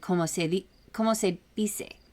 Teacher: it's a much softer D, and it comes out like a th sound. Here's I'm gonna send it in voice chat shenanigans.